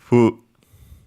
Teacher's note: actually pronounced as a bilabial, so with both lips instead of the bottom lip and teeth, and upper teeth.